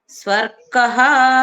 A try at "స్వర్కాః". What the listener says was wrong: స్వర్గాః రాకు దీర్ఘం ఉంది.